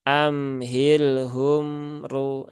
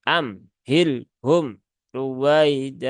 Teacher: sidah lagi nah ini enggak enggak cocok ya karena di sini ada mim sukun dan lam sukun semuanya itu tawasut